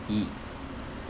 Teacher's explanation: menurunkan bibir bawah atau rahang bawah ini ya Ii yang kedua di bagian tengah lidah Ini naik-naik ke arah langit-langit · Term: kasrah